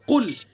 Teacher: پر پڑھیں گے، اور قاف کا مخرج کیا ہے؟ زبان کی جڑ اور اس کے مقابل اوپر کا تالو، یہ قاف، اور قاف کو پر کر کے پڑھیں گے قل۔